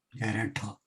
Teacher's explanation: Jaratha, tha can be Mahaprana.